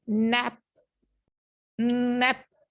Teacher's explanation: हमारी जबान जो है वो जाके एल्व्यूलर रिस्ट से टकरा के वहां पे रुक गई है, क्या कर रही है, क्लोजर ऑफ एयर कर रही है, नाक से जा रही है आपकी सांस, हम्म, ठीक है, नैप, नैप, ठीक है, अंडरस्टैंडिंग, सही।